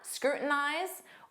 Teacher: Native speakers will often drop that T and form a flap T, and it will sound like scrutinize.